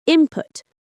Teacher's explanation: It becomes input because the N assimilates to the P that follows it.